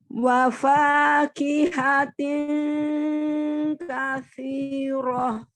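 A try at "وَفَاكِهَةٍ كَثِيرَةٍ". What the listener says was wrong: Kasi ada hurufnya saya, ujung lidahnya ada di ujung gigi seri atas ya, bukan kasi, tapi kasi. I-nya 2 harokat saja ya. tidak terlalu panjang sinya katsirah, katsirah ya 2 harokat saja.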